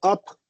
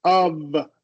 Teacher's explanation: We need to make sure those lips are open when you're making the V and that we keep that voicing